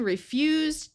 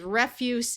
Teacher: So here with the verb, we have the Z sound. And when we have the noun, it's the s sound.